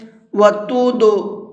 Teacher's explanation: وَتُدْلُوا بِهَا، دال حروف قلقلہ میں سے ہے، اور حروف قلقلہ کے اندر قلقلہ کرنے کی شرط یہ ہے کہ وہ ساکن ہونا چاہیے۔ تو یہاں پر یہ دال ساکن ہے تو اس کے اندر قلقلہ کریں گے۔ قلقلہ کہتے ہیں ہلکا سا آواز کو ڈبل کر کے پڑھیں گے۔